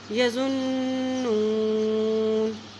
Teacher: وَإِنْهُمْ، وَإِنْهُمْ إِلَّا يَظُنُّونَ، نون کے پر شد ہے، ذات کی پیش کو نون کے ساتھ ملائیں گے، اور نون کے پر جب شد ہوتی ہے تو وہاں پہ غنہ کر کے پڑھتے ہیں